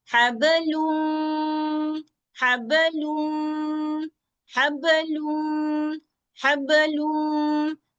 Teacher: ये मिलाने की आवाज भी हम दो हरकत तक चलाएंगे। नाक वाली आवाज आएगी, हबलूम, नाक से आवाज आ रही है, दो हरकत तक, लूम।